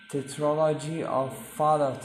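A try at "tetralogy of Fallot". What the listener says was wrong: Fallow. This is a French word. In French, if there is no vowel at the end, you cannot read that T.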